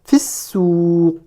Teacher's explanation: je ne prononce pas le ya, la voyelle longue. Ici dans fi, je ne prononce pas le ya.